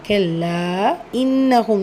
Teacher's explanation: சோ மத்துல் முன்பசில் நான்கு ஹரக்கத் அளவு நீட்டம் கொடுத்து ஓதுங்க கெல்லா இன்னகும் நூன் சத குன்னா செஞ்சு ஓதுங்க